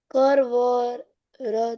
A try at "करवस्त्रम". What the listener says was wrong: करवस्त्रम। र पूरा आना चाहिए।